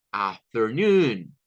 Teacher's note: tiene un sonido largo o sea aquí Sí suena como la u nuestra si es largo es como pronunciarlo y alargar el sonido es